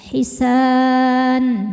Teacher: Maka sa nya ini panjang boleh dua atau empat atau enam harakat asal konsisten dalam sekali baca. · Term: mad arid lisukun